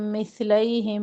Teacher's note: میم ساکن کے بعد میم ادغام کر رہے ہیں